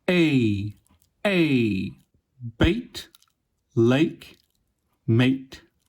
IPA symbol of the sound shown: eɪ